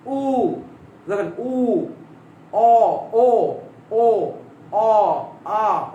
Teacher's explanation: দেখছেন আস্তে আস্তে ঠোঁটটা একটু বড় হচ্ছে, ফাঁকা হচ্ছে আস্তে আস্তে